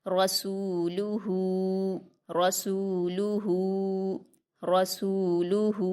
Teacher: ہا پر الٹا پیش ہے، اس کو ہم واو مدہ کی طرح 2 حرکات کھینچ کر پڑھیں گے۔